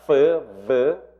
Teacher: 레이비오 덴탈은 립하고 덴탈은 teeth. 윗니에 아래 입술을 대고 내는 소리니까 레이비오 덴탈 f, v.